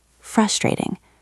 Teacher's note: Listen to the stress in the word frustrating. It's on the first syllable.